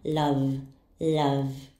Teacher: Doesn't our throat vibrate when we pronounce v? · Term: voice sounds